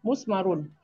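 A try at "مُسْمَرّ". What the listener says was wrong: Tasdidnya harus terdengar. Sidanya belum terdengar. Tasdidnya harus terdengar. Tadi Ibu bilang musmarun. Harusnya musmarrun. Ya, kurang tekanan. kacang panjang kan lagunya kacang panjang. Kalau ini tekan, tekan, tekan. Cuma ada lagunya.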